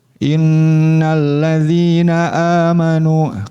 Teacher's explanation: ketika baca in itu harus terasa sampai ke rongga hidung ya. Kalau belum terasa berarti masih harus terus dilatih ya. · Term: gunnah